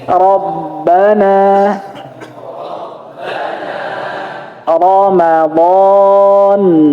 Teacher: Bunyi O itu memang karena lidah yang yang diangkat ke belakang. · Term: huruf tebal